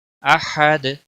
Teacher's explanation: اس اظہار کو اظہار حلقی کہتے ہیں. احد ہا کا خاص خیال رکھنا ہے، وسط حلق والا ہے. دال وقف کی صورت میں ساکن ہوگا.